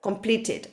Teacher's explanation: you have to make the e sound because if you don't it's impossible to pronounce two t sounds together